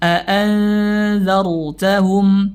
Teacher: ra sebelumnya berharokat fathah maka dibaca tebal ra-nya